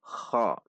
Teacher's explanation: selanjutnya huruf k k fathah perhatikan sifat dan makhraj huruf k tidak membulatkan bibir saat mengucapkannya juga tidak terlalu mengorok saat mengucapkannya seperti KHO KHO namun ko dengan halus ko pada titik makhraj